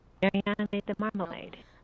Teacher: for broad focus, in English we find high star, high monotone